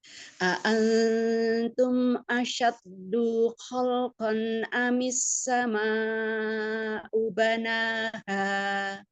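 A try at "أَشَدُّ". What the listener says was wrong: Asyaddu, dia nggak ada matnya. Asyaddu khalqan. Umi jadi kayak Umi tuh kayak dijeda asyaddu gitu jadinya kayak ada hamzah. Langsung aja asyaddu khalqan amis sama'u banaha.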